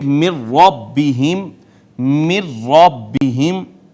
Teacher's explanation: را نے ماقبل کو اپنے اندر ضم کر لیا تو یہ شد آ گئی۔